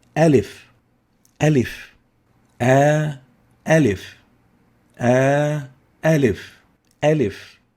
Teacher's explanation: the air is articulated from the jof from the empty space of the larynx